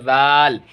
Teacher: जब जाल निकालेंगे तो ज़बान हल्का सा हमारा बाहर आएगा